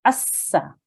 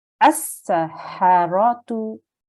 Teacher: we need to join this hamza to the sin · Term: sin mushaddad